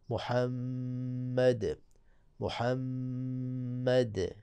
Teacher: جب اس میں محمد صلی اللہ علیہ وآلہ اس پہ آپ وقف کریں گے تو آخر میں دال ہے، دال پہ قلقلہ ہوگا، قلقلہ بھی کیسا ہوگا، قلقلہ کبرا ہوگا، اور پھر شدت کو بھی آپ نے مد نظر رکھنا ہے، محمد محمد، دال کو آپ نے ظاہر کرنا ہے۔